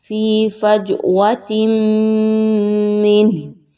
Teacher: آگے جو difficult word ہے وہ ہے فی فجوۃ من، فج، جیم کے اوپر قلقلہ کیجئے، جیم کی آواز کو تھوڑا سا ہلا کر پڑھیں گے۔ فی فجوۃ من، وقف کی صورت میں آپ نے ہا کو ساکن کر دینا ہے۔